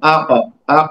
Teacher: سکون رہے تو آواز اس طرح سے دوہرا کر کے نہیں آئے گی. تو مخرج میں اضطراب کا کپاہٹ ہے تو آواز ایسا لگتا ہے کہ ایک بار اور سنائی دے رہی ہے نا. تو آقا آقا تو ایسا لگتا ہے کہ ہم زبر بول رہے ہیں, اور وہ زبر نہیں ہوتا اصل میں, ہاف زبر بھی نہیں ہے وہ. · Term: قلقلہ کی صفت, قلقلہ